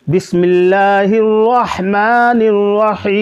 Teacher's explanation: دونوں را آپ پور پڑھیں گے یعنی موٹا پڑھیں گے، اور دونوں ہا آپ حلق سے ادا کریں گے